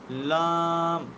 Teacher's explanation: ثنایا بھی دانت ہیں، رباعی بھی دانت ہیں، انیاب بھی دانت ہیں، اور ضواحک یہ داڑیں ہیں۔ جب زبان کا کنارہ ثنایا، رباعی یہ دانت اور ضواحک یہ داڑیں، ان کے مسوڑوں سے جا کر کے لگے نا زبان کا کنارہ، اس وقت لفظ لام ادا ہوگا